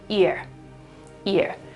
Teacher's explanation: And it's followed by the diphthong here, which is a short E, which is almost a I, and a schwa, so ear, ear. We don't pronounce the R at all.